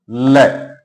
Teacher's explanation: वह वर्ण है जिसके उच्चारण में जीभ की जो नोक है ऊपर मसूड़े को स्पर्श करती है, जीभ एकदम खड़ी हो जाती है और जो वायु है वह जीभ के दोनों तरफ से बाहर निकलती है। ऐसे वर्ण को पार्श्विक व्यंजन कहा जाता है और इसका उदाहरण है लय।